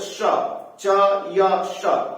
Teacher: श च य श ये सब तालू से बोले जाते हैं